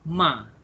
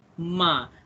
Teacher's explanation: Okay, dia garis mendatar. First tone, dia flat je.